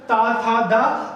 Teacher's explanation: ये दंत को, दांत को हमारी जीभ टच करती है।